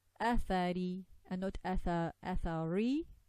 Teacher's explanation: when Ra has a Kasrah, we say it with Tarqiq, we say it with the tongue lowered at the back.